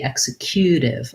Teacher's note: executive has second syllable stress